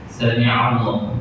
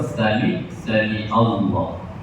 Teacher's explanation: dia tertukar Hamzah dengan Ain, kadang Ain dengan Hamzah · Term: huruf Ain